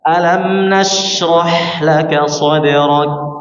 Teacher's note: Kafkan di pangkal lidah bagian bawah menempel ke langit-langit atas. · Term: huruf kaf